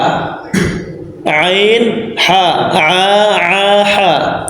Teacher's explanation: Tengah tenggorokan darinya keluar keluar huruf Ain dan ha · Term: wastul halq